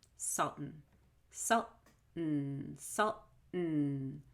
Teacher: What I'm doing is I'm holding the LT, salt, and then I'm letting all the air out my nose. I'm not saying salt un. · It's only coming out my nose and there's no vowel. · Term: held T